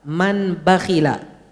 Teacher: Nunnya itu pertama diubah jadi mim. Habis diubah jadi mim, diikhfa'kan. Habis diikhfa'kan, dipanjangkan gunnahnya.